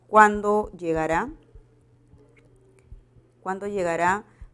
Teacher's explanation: Presenta el tono final descendente